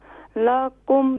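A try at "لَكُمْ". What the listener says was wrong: لاکم نہیں لکم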